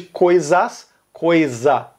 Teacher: São Paulo e Minas Gerais omitiram o plural. Eles comeram o plural. Então, a gente não fala as minhas coisas.